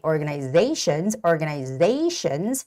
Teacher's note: the word organization has the stress on the one two three fourth syllable which is organizations after Z there's an a right so it's